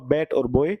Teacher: दोनों होठों से मिलाने से ही बी की साउंड आती है, जैसे इसे भी वॉइस्ड बोलते हैं।